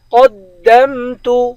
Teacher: قوف کو دال کے ساتھ ملائیں گے، قوف کو موٹا پڑھیں گے